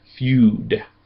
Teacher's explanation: It's not the short u like an up. That's a long u like in feud.